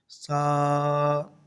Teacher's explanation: سا کو ادا کرتے وقت سیٹی کی طرح آواز نہیں کرنی